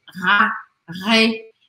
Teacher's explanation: Eu simplesmente deixo passar esse ar pela garganta.